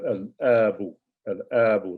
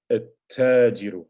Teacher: you go straight to the ta from the alif. You skip over the lam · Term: haruf al-Shamsiyya